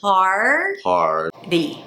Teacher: It's a long A. Then you bring the tongue up for the R.